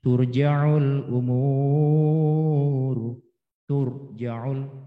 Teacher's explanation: ro yang dibaca tebal ketika mengucapkan huruf ro tersebut ya itu adalah tafkhim. Dan bibir yang bawah terangkat naik.